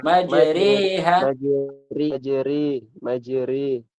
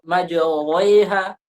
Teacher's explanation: dia sudah tidak fathah lagi bukan fathah sempurna dia sudah bercampur dengan kasrah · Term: imalah